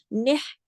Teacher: हा जो है गले में चला जाता है, इसकी आवाज चलती है सांस के साथ